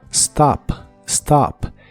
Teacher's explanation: es stop empieza con el sonido de la s s y la o de esta palabra se pronuncia como una a profunda como si la produjera desde la garg o desde el pecho